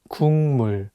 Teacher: The consonant 기역 is for G sound in English, so you can read it as 국. But it's paired with the nasal sound 미음, so it changes the pronunciation from a G sound to an NG sound, and you need to read it as 국물.